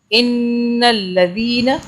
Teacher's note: ذال کو سافٹلی ادا کرنا ہے، زبان کو دانتوں میں رکھیں اور پھر اسے ادا کریں